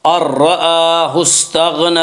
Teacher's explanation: غین کو پر پڑھیں گے، غین حروف مستعلیہ میں سے ہے۔ حروف مستعلیہ 7 ہیں جن کا مجموعہ خص ضغط قز ہے، جو ہمیشہ ہر حال میں پر پڑے جاتے ہیں۔